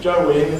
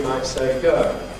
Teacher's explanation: we optionally get rid of the second element of the diphthong. So that rather than going, we might say go. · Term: smoothing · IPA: [ gəɪŋ ]